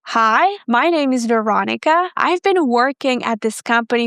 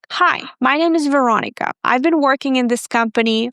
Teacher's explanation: They use the rising intonation pattern in statements. Guys, please do not do that because you are going to sound insecure. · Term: falling pattern